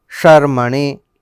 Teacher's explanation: એટલે આ શ છે, તાલવ્ય શ છે, શર્મણે